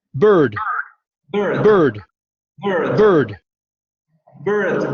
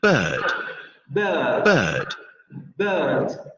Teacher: en inglés norteamericano, esa vocal sí sufre rotacismo y entonces dicen bird. · Si se dan cuenta, desaparece el sonido rótico de la vocal. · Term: inglés de Inglaterra